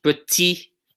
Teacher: we don't pronounce the final T, right? This does not get pronounced.